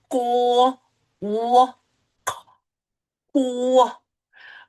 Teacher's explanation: So you move from an unvoiced to a voiced sound. That is the sound of Q.